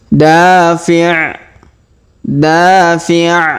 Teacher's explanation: Huruf da kita panjangkan 2 harokat karena alif di depannya.